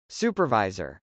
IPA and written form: sˈupɚv.aɪzɚ (supervisor)